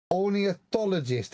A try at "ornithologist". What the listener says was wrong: It's not orneo. It's not orneo. It's ornithologist. It's ornithologist, not orneo.